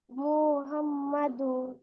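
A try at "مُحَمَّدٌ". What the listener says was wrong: কি এক পেশ নাকি দুই পেশ লাস্টে? হ্যাঁ, কিন্তু শুনে তো মনে হলো এক পেশ শোনা যাচ্ছে। এখানে আরেকটু ক্লিয়ার বলতে হবে, মোহাম্মাদুন। মোহাম্মাদুন।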